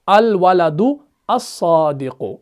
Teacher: حمزۃ الوصل پڑھنے میں نہیں آئے گا. لام تو ویسے بھی نہیں پڑھا جاتا کیونکہ آگے صاد جو ہے یہ حروف شمسی میں سے ہے, اور جب اس کے اوپر تشدید آ گئی تو دال کو صاد کے ساتھ ملایا جاتا ہے.